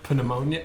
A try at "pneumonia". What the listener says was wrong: No one pronounces a P. Come on.